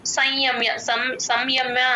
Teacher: స కి య కి మధ్యలో సున్నా హాఫ్ ఏ పలుకుతాం అనుస్వరాన్ని సగమే పలుకుతాం య ముందు ఎప్పుడు సున్నా వచ్చినా సగం పలుకుతాం అందుకని సంయమ్య సంయమ్య అనము